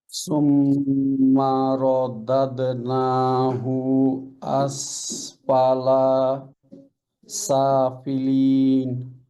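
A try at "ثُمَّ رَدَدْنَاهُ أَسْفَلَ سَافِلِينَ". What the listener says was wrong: আচ্ছা, এখানে যেটা হয়েছে, এই যে পেশের পরে ওয়াও সুকুন নাই, মাদ নাই। এখানে মাদ হবে, নাতে হুতে মাদ নাই। আর আসফালা লাতে জবরের পর আলিফ নাই, খেয়াল করে। আসফালা সাফিলিন।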